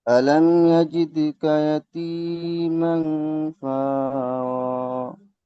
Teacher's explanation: হালাকি এখানে ইজহারের স্বভাবই আছে, মিমটা গুন্না হবে না